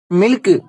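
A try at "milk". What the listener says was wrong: டேய், அதை ஏன்டா சில்க் மாதிரி சொல்ற? கே நல்லா மென்மையா சொல்லணும். மில்க்.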